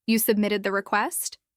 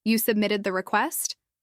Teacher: That rising tone at the end doesn't just make it sound more like a question, it also softens it.